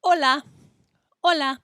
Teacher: in Spanish, the letter H is silent. It doesn't make any sound.